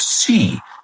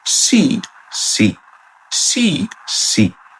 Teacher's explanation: It's longer than the Spanish sí, but the mouth stays more closed.